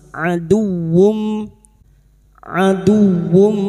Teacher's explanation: huruf dal masuk pada huruf wau tanpa ditahan tanpa mendengung hanya masuk aduwum aduwum Berikutnya huruf wau dumat tanwin yang berharakat dumat tanwin atau dumatain bertemu mim idgham bighunah.